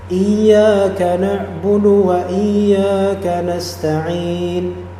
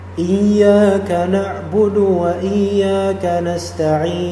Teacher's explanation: Nasta'in boleh dua harakat, atau nasta'in boleh empat harakat, atau yang lebih panjang 6 harakat. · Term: mad arid lis sukun